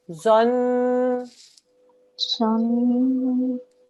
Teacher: It's a noon mushaddad, so we do a 2-second nasal sound.